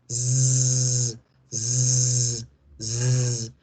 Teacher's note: Mientras que si hacemos la Z, el sonido nace en la garganta y se va hacia la boca.